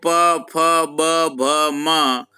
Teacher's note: ये 5 वर्ण ओष्ठ है, इनके उच्चारण में ओष्ठ ऊपर नीचे होता है।